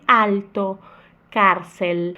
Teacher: O L se tiver depois da vogal é diferente e ele vai, a língua vai lá no céu da boca.